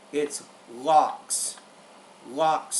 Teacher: when we pronounce the X sound in English it has a k and an S sound